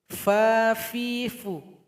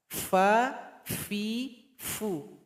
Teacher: Bibir di bawah bergabung dengan gigi seri paling atas.